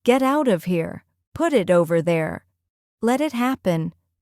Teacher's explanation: Another important connection is between words ending in t or d and the next word beginning with a vowel. Americans often blend these sounds so softly that the t almost disappears.